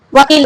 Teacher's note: दंतोष्ठ है। यानी दांत और ओष्ठ दोनों का प्रयोग होगा। दांत प्लस ओष्ठ।